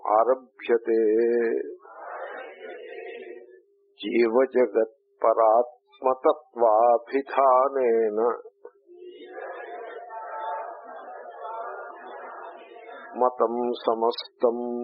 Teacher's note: It's a samasa, There is no dirgham and it should be continuous. You may not want to break it there.